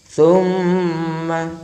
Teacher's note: Jadi keluarnya huruf nun tasydid, mim tasydid itu berada di rongga hidung kita, bukan di lisan kita dan juga bukan di syafatain atau dua bibir kita. · getarannya ada di hidung kita ya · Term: gunna